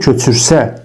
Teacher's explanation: köçürsə dedikdə vurğu gəlir düşür sona